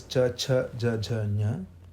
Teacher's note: Palatal is Ch, Ch, J, J, Ñ, which is where we touch the roof with the tongue.